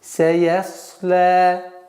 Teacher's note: Син мягкий звук, я мягкий звук, вот сад твердый. То есть здесь свистящих звуков син и сад.